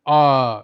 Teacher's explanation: उच्चारण में मुख पूरा खुलता है। आ, जब आ बोलते हैं तो आपका मुंह पूरा खुल जाता है। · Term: विवृत स्वर